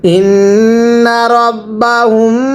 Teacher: মিম সাকিনের পরে বা থাকলে মিম সাকিন গুন্নাহ করে পড়তে হয়